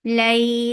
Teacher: this is harf leen, so make it soft and make it 2 counts long. Lay, for the circular lips attached with me, will get sifa of tawassut, and tawassut is medium flow of sound.